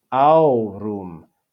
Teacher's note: three vowels in the word there are only two syllables because ah and oo form a diphthong and are read as one syllable